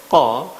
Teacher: Posisi lidah ketika kita melafalkan qa, bagian belakang dia ada naik ke atas atau isti'ala, dan bagian depan tetap di bawah atau infitah, dan termasuk huruf ismat atau yang berat untuk diucapkan, tidak bisa diucapkan dengan cepat. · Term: huruf Qaf